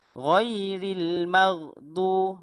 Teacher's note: apabila sebut huruf ghain yang mati tu, betul-betul di leher yang bahagian atas